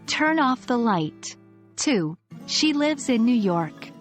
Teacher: Did you notice your voice falling at the end of these sentences?